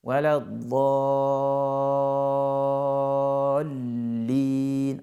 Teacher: le type de prolongation qui est là, le type de mad qui est là, il équivaut à 6 temps